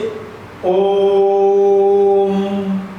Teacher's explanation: अब उदाहरण देख लीजिए, जैसे ओम, यानी उसमें 3 लग रहा, ओम 3 मात्राओं का समय लग रहा है तो प्लुत स्वर हो गया